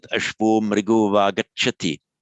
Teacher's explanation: the ashvah followed by the voiced m becomes ashvo mriga, and the mriga followed by the voiced consonant with va again becomes an o.